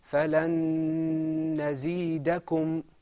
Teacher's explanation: In idgham, there's a lengthening of your voice, and I think you can hear it. There's a slight humming sound.